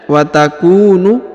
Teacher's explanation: Wa takunul jibalu, perhatikan, wa takunu, huruf ku dibaca panjang 2 harokat karena di depannya terdapat waw sukun